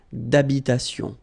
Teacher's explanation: H doesn't exist in French, well, in most of the cases. So it does mean that you don't pronounce it.